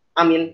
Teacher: Alif dan mim tidak bermat.